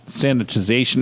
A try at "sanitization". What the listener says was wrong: It almost sounded like you said sandwichization. Sandwichization. It was a combination of sanitation or sanitizing and sanitation.